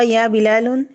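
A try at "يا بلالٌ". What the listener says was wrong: ইয়া বিলালুন। স্পষ্ট করে বলেন, সুন্দর করে। ইয়া বিলালুন, নুনটাকে আরো সুন্দর করে বলেন। তা আমারও তো কথা ইয়া আসছে, তো নুনটা কোত্থেকে আসলো তাহলে? ইয়া এসেই তো নুনকে বিদায় করে দিবে।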